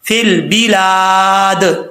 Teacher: اب یہاں پر لام ساکن ہے, قلقلے سے بچانا ہے اس کو, اور لام کے آگے الف ہے, لمبا کریں گے. جب یہاں پہ دال پہ وقف کریں گے تو دال ساکن ہو جائے گا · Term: قلقلہ